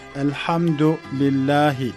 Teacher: u ü arası bir sesle okur Arap hafızlar Elhamdulillahi [Müzik] Elhamdülillahi şeklinde bu bu ü arası bir sesle okurlar